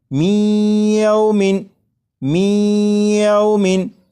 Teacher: اب آپ یہاں پر غور کریے گا کہ میں میم کے بعد یا کو پڑھوں گا اور درمیان میں جو آواز ہے اس پر غور کریے گا، میومن میومن، یہ جو آواز ہے می ای، یہی ادغام ہو رہا ہے، اور ادغام اس طرح کہ نون ساکن کو یا میں شامل کر کے پڑھا جا رہا ہے اور غنہ کر کے پڑھا جا رہا ہے